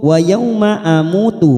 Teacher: banyak waw sukun ya, jangan dibaca o tetapi u